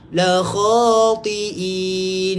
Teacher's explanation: Dia ta tebal, bunyi tebal, ti'in nipis.